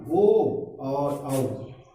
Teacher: ओ और औ, इसका उच्चारण स्थान कंठ और ओष्ठ है, इसलिए इसको कंठ और ओष्ठ वर्ण के नाम से भी जाना जाता है।